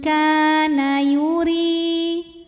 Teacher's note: Huruf ra dibunyikan secara tarqiq sebab berbaris kasrah, maka dibacanya tipis.